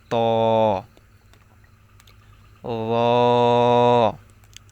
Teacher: জিহ্বার আগা সামনের উপরে দুই দাঁতের গোড়ার সঙ্গে লাগিয়ে ত উচ্চারিত হবে